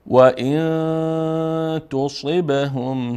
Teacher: اخفا داریم چون بعد از حرف نون اینجا حرف ت آمد، اینجا نونه مخفی میکنیم